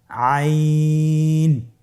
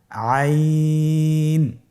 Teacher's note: আইন হরফটি কণ্ঠনালীর মধ্যখান থেকে উচ্চারিত হয়। · আইন হরফটি উচ্চারণের সময় অবশ্যই 3 আলিফ টেনে পড়তে হবে এবং আইন হরফটি বারিক হরফ, পাতলা করে পড়তে হবে।